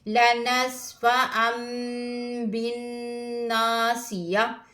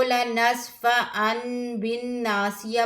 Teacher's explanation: तनवीन के बाद हरूफ बा आया है, तो यहाँ पर इक़लाब होगा, नून को मीम से बदल कर पढ़ेंगे, नून की साउंड नहीं आएगी. लनस्फ़अम बिन्नासिया, इसको लनस्फ़अन बिन्नासिया पढ़ना गलत है.